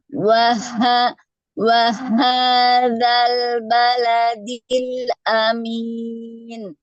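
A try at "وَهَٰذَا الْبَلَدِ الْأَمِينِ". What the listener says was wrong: Masih, Bu. Masih, iya, masih cenderung ke atas. Coba diturunkan, Bu, ke sini. Suaranya coba diturunkan ke pangkal. Rasakan di sini yang bergetar ya.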